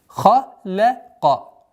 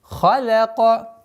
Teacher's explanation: Лям мягкая, между двумя твердыми звуками.